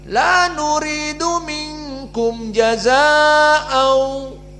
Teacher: Mad wajib muttasil dibaca 4 saja.